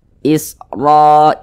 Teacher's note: huruf ro dibaca tebal, dibaca tafkhim. Jadi kalau kita membaca Al-Quran apabila berjumpa dengan huruf ro yang memiliki tanda baca fathah atau harokat fathah, maka huruf ro dibaca tebal, dibaca tafkhim.